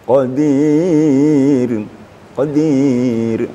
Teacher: ro apabila dimatikan atau mati asli atau mati karena wakaf sebelumnya baris bawah apalagi sebelumnya ada ya mati maka ro itu lebih tipis